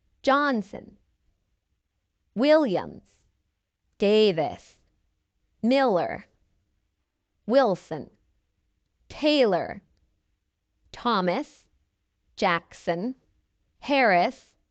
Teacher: they all stress the first syllable